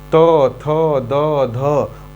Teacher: त को हम लोग दंत से बोलते हैं, यानी कि जीभ दांत को टच करेगी